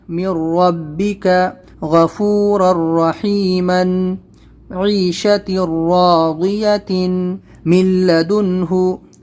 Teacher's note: اور را اور لام کو جو ہے تنوین سے، نون ساکن سے یعنی الگ کر کے ہم کو نون کی آواز کو ختم کر دینا ہے، اور دن سے در کرنا ہے، اور من سے مر کرنا ہے، من سے مل کرنا ہے. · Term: ادغام